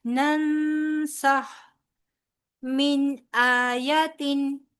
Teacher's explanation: नून साकिन के बाद सीन है, लिहाजा इख्फा होगा